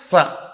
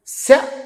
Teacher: ఇప్పుడు సకారం దంత్యం శకారం తాలవ్యం రెండిటికి ఎంత తేడా ఉంది మరి